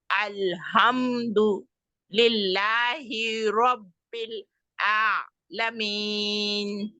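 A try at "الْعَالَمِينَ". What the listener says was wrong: आलमीन, आलमीन नहीं है। आ आइन लंबा करना है और मखरज ठीक से, आलमीन आलमीन।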